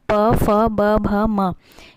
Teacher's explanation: यह आपके ओष्ठ से निकलती है, इसलिए इसे ओष्ठ व्यंजन कहते हैं।